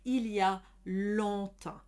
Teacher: you want a nice open round sound and you want to avoid over nasalizing the sound into an ah sound which is very flat and squished